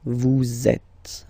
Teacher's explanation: vous is ending with S, and then you tend to make a little link between them. So vous êtes, z, it goes like that. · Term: liaison